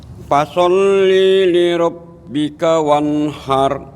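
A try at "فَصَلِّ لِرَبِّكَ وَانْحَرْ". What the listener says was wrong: Ini Pak Haji, linya jangan dijeda langsung. Fasolli li rabbika. Nah, nanti kalau dijeda seolah-olah panjang. Fasolli li rabbika, tapi fasolli li rabbika.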